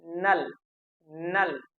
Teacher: तो न, स और ल का उच्चारण में जो जीवा है हमारे मसूड़े को स्पर्श करती है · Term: वर्ष्य